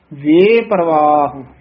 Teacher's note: ਵਵੇ ਤੋਂ ਡੈਸ ਦੇ ਕੇ ਲਮਕਾ ਕੇ ਉਚਾਰਨ ਕਰਨਾ